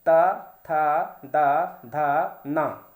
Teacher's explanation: आपके जबान का अगला हिस्सा वो दांतों से जाकर के टकराएगा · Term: दंत वर्ण